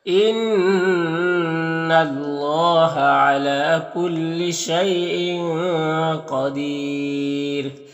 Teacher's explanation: ان اللہ نون مشدد غنہ ہوگا، اور یہاں پر اللہ کے لام سے پہلے نون کے اوپر زبر ہے تو اللہ کے لام کو پر پڑھیں گے، علا میں کھڑا زبر ہے، اور یہاں پر یالین ہے، یہاں پر تنوین میں اخفا ہوگا، قاف حروف مستعلیہ میں سے پر پڑھیں گے، اور دیر میں یہاں پر وقف کریں گے تو مد عارض وقفی ہوگا، اور را کو باریک پڑھیں گے اس طرح سے۔